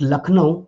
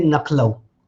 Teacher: You are replacing the consonant. It is known as metathesis in phonology.